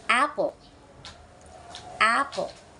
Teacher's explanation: When you say apple, pay attention to how your mouth is positioned. The sound a is produced with an open mouth, and the tongue is positioned low and slightly forward.